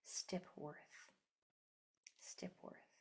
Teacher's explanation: you don't hear the O at all. You only hear the R, which means that R is acting like a vowel.